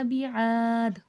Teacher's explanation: ربو کا بعاد، را کو پر کر کے پڑھا جائے گا، بعاد، عین میں الف مدہ ہے، الف سے پہلے زبر ہے، تھوڑا کھینچ کے پڑھا جائے گا، اور دال ہے، دال میں قلقلہ ہوگا۔